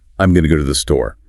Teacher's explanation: You hear the emphasis, the energy on the key verbs and the noun, >> right? Going, go, store.